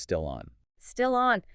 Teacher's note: the IL sound at the end of still, it doesn't stop. It connects directly to the vowel sound, the O sound, at the beginning of on. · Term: linking